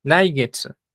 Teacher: la U, como termina en SU, casi no se oye